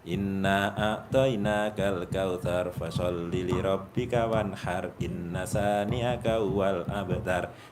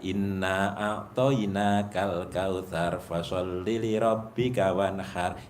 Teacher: jadi dengungnya tetap ketahan walaupun sekian ketukan